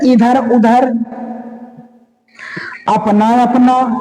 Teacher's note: केवल मुंह से बोले जाने वाले शब्द निरनुनासिक होते हैं।